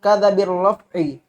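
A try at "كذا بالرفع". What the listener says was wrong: Jangan langsung kadab bi, langsung kadab dusta. Jangan langsung kadza bir-raf'i. Kasih jarak sedikit.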